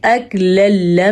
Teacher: اکللما، یہاں پہ غنہ بالکل بھی نہیں ہوگا کیونکہ نون تنوین کے بعد لام اور را میں سے را آیا ہوا ہے، ادغام ہوگا، ان کو آپس میں ہم ملا دیں گے لیکن غنہ نہیں ہوگا